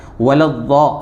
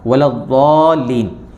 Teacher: ضاد کا مخرج کیا ہے، کیسے نکالیں گے اس کو سمجھ لیں کہ یہ جو ہماری زبان ہے اس کی جو کروٹ ہے، اس کو اوپر کی داڑھیں جو ہیں ان کی جڑوں میں لگانا ہے۔ زبان کی کروٹ اور اوپر کی داڑھوں کی جڑ